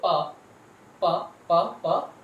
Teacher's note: So voiceless consonants are those consonant sounds when they are produced, the vocal cord, if you touch here, it does not vibrate. If you try to say pa, pa, pa, pa, the vocal cord does not vibrate. That's why these are known as voiceless consonant sounds.